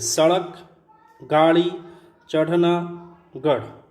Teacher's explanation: उत्क्षिप्त व्यंजन। जिनके उच्चारण में जीभ पहले ऊपर उठकर मूर्धा को स्पर्श करे और फिर झटके के साथ नीचे आए